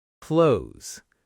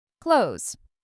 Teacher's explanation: >> This one's tricky because of the th and s together. A lot of learners say every sound clearly. Clothe this. But native speakers often blend it into something closer to close.